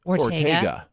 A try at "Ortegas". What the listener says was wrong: Ortegas. The S isn't silent.